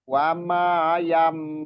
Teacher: Iqlab. Jadi huruf nunnya berubah jadi mim dan ditahan dan juga didengungkan atau digunahkan. Wama yam. Jadi mim nun sukun bertemu ba itu berubah jadi mim.